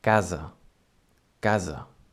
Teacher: Casa is spelled C-A-S-A, C-A-S-A, and in this case the S sounds almost like a Z.